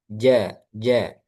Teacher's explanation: Huruf jim dia keluarnya dari tengah lidah. Ja, ja. Kemudian sifatnya syiddah, kuat.